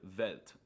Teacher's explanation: they pronounce the W's with a V sound, like in the word Welt